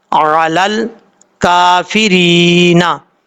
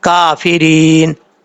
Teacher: जब यहाँ पर स्टॉप करेंगे तो नून साकिन हो जाएगा